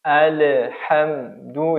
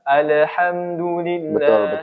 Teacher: Nah, kemudian contohnya pada kata lafaz alhamdu. Ya, seharusnya tanpa qalqalah pada huruf lam,